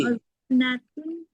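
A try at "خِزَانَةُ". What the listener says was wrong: Khi. Koknya kasrah. Koknya kasrah. kho kasrah kan? Khi. Khizanatu kutubin.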